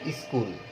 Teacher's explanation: স্কুল শব্দটি আমরা যদি বলি তাহলে এই শব্দটির শুরুতে একটি অতিরিক্ত হ্রস্বই দিয়ে উচ্চারণ করা হয় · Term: আদি স্বরাগম